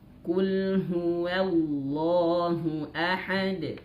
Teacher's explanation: tebalnya lafaz kalimat Allah ini harus di tebalnya itu pangkal lidah naik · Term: lam jalalah